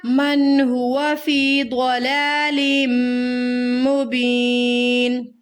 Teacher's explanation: یہاں پہ آپ نے غلطی کی. من ہوا، نون کی آواز کو تھوڑا سا ہلا دیا. نون کی آواز کو ہلانا نہیں ہے ہمیں